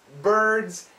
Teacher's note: it's like a dz the sounds go together but the d is weak